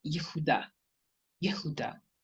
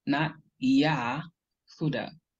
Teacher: here we don't have a long ah, we have a shva or a schwa, which is a very short, quick sound, or it is silent.